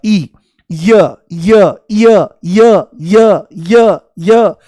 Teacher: जैसे ही य बोलोगे तो ई शुरू में महसूस होगा